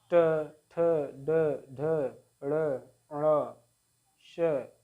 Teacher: मूर्धन्य व्यंजन जो हमारा जीभ ऊपर टच करता है तालु पर